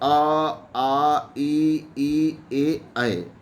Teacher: अवृत्तमुखी स्वर जिनके उच्चारण में ओठ वृत्त सदृश नहीं होते हैं उनको अवृत्तमुखी स्वर कहा गया है।